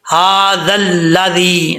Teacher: ذال یہ بغیر سیٹی کے پڑھا جائے گا، نارمل طریقے سے پڑھا جاتا ہے. اس کا مخرج ہے زبان کا سرا اوپر والے دانتوں کے کنارہ اس کے ساتھ کنارے کے ساتھ لگے گا، یعنی جو اندرونی کنارہ ہے اندرونی کنارے کے اوپر زبان کا سرا لگے گا تو یہ ذال پڑھا جائے گا.